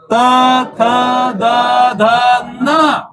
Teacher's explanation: पहा आता जीभ कुठे लागते दाताच्या मागे पाहायला लागते